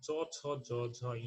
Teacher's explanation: এগুলোকে তালব্য ধ্বনি বলা হয়, কারণ এগুলো তালুতে উচ্চারিত হয়